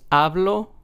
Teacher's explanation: In the word hablo, we are stressing the second to last syllable. So in this word, since there's only two syllables, this would be the first syllable.